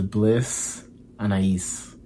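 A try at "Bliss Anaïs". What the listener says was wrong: were right the first time. You just say it so fast. Like, you don't pronunciate. Anais Taylor.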